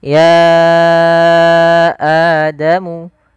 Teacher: ya panjangkan dulu ianya sepanjang 4 atau 5 harakat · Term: mad jaiz munfasil